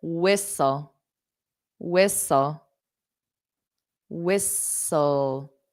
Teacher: so you don't hear those t's so whistle s so you just imagine the T's not there